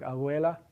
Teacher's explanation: There are dialects of Spanish, for example, that have that between vowels. If you have the letter B between vowels in words like abuela, that B has that sound, a voiced bilabial fricative.